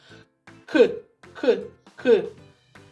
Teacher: звук к приголосний глухий твердий